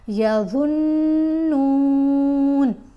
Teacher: ضا کو ادا کرتے ہوئے آپ کی زبان دانتوں کے درمیان میں ہوگی